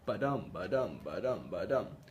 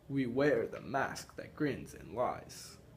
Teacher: So there's feet of we wear, a foot of the mask, a foot that grins, and a foot that is and lies. And it's unstressed, stressed for each syllable. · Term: iambic